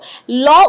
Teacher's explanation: ল উচ্চারণ করতে যেয়ে জীব মাঝে টাচ করে দুই পাশ থেকে বাতাসটা বের হয়ে থাকে যে সকল ধ্বনি উচ্চারণ করতে যেয়ে দুই পাশ দিয়ে বাতাস বের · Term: পার্ষিক